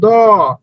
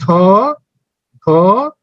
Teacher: দেখেন ধ উচ্চারণ করতে বেশি বাতাস বেরোচ্ছে। অর্থাৎ যেটা থেকে কম বাতাস বেরোচ্ছে সেটাকে বলা হয় অল্প প্রাণ, যেটা থেকে বেশি বাতাস বেরোচ্ছে সেটাকে বলা হয় মহাপ্রাণ।